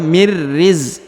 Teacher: huruf nun sukun bertemu dengan ro bertasdid maka huruf nunnya menghilang dan melebur ke huruf ro Mir ya langsung ke huruf ro ya mirriz Jadi huruf nun · Jadi huruf nun sukunnya menghilang Ya karena sudah melebur ke huruf ro yang bertasdid